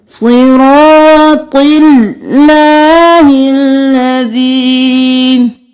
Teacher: صاد موٹا، رو موٹا، طا موٹا، اس میں جلالہ کو باریک پڑھنا ہے کیونکہ پہلے زیر ہے